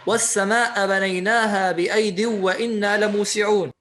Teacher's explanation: يعني قرأ والسماء بدون مد